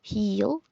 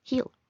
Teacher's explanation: suena con una I más sencilla